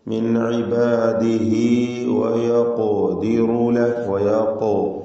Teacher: ഖാഫിന് കൽക്കല സുഹറ നൽകണം.